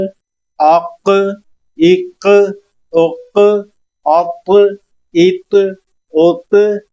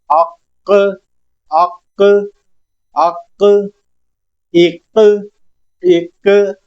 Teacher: آواز پلٹتی ہوئی آ رہی ہے، اس آواز کا پلٹنا کلکلہ کہلاتا ہے۔ جمش پیدا ہو آواز کے اندر، جیسے وائبریشن سی ہوتی ہے، اس طرح ہم نے آواز کو کریٹ کرنا ہے۔